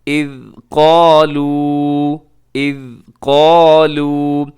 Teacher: اور اس کے بعد آگے اذ قالوا، اذ قالوا، یہاں پہ ذال ہے، ذال کو ہلائیے گا مت اور ذال کو قلقلہ بھی نہ کیجیے گا، اس کو باریک بھی پڑھنا ہے آپ نے